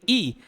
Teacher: अ ई बोल के देखिए, ई तो कहीं ना कहीं ऐसा लगेगा कि जीभ का आगे वाला हिस्सा काम कर रहा है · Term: अग्र स्वर